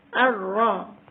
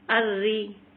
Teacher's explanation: را کو باریک پڑھنا ہے کیونکہ اس کے نیچے زیر آ گئی ہے